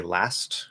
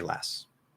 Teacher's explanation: If there's nothing after it, so like at the end of a word, and say that it's, there's no other words, or there's nothing really for the T to connect to, or whatever, like a vowel. So there's nothing to connect to after it. The T will commonly disappear. Like if I say last, I'm going to say last, right?